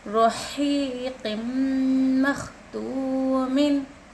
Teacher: तनवीन के बाद मीम, मीम यरमलुन में से है, यहाँ पर गुन्ना करना चाहिए। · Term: इदगाम यरमलुन